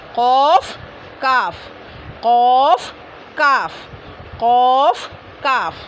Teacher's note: ये क़ौफ़ थोड़ा अंदर से, ये काफ़ थोड़ा ऊपर से